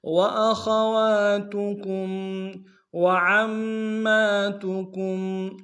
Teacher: واخواتکم وعماتکم، واو کو نم سے ادا کریں گے۔ عین کو میم کے ساتھ ملانا، عین کو گہرائی سے ادا کریں گے، میم کے اوپر تشدید زور دیں گے